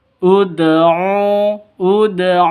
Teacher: Jadi ini ada Qalqalah Dal mati ya Dal sukun Qalqalah sugro ada di tengah